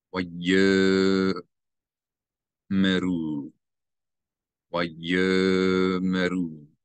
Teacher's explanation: So you're going to not pronounce the aleph as a glottal stop. You read this as if the aleph is not there.